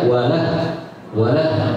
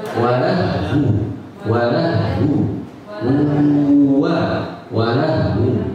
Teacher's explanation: Wawunya hilang. Seperti tidak ada.